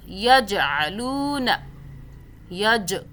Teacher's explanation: جیم پہ قلقلہ کریں، جھٹکا دے کے پڑھیں، یہ قلقلہ کا حرف ہے جیم۔